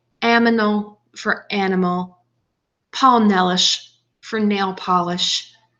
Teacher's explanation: the child includes all the sounds but mixes them up within the word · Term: metathesis